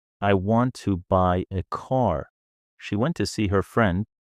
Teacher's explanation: important words want by car went see friend are stressed while the smaller words to a her are quick and weak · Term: Rhythm, rhythm